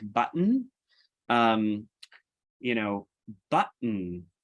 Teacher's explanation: So a word like button, button, basically you have a T, an unreleased T, but and then there's no vowel there. It's just you're changing from a T to an N, and the N is functioning as the syllable on its own